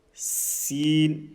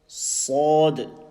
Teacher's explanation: Now this is sin, empty mouth, and this is sad, full mouth. And also very important, when pronouncing letter sad, we must not circle our lips.